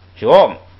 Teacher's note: 加上后加字撒，这个读音就变成升降调了啊